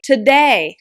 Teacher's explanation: This stress syllable day has a long vowel A, today. And I'm also creating a pitch variation with my mouth.